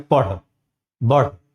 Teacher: तो इसके उच्चारण में जैसे हम करते हैं पढ़, बढ़, तो इस स्थिति में होता है कि जीभ हमारी ऊपर उठती है और तेजी से नीचे गिर जाती है। तो इस तरह के वर्णों को हम उत्क्षिप्त व्यंजन कहते हैं, या दो गुण के कारण, माने दो रूप में यह उपस्थित है इसलिए द्विगुण व्यंजन भी कहते हैं।